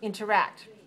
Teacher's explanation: Where's the stress? Interact. On the 3rd syllable. So 3-3 is our syllable stress code.